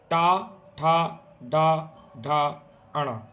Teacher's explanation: ट वर्ग का उच्चारण स्थान है मूर्धा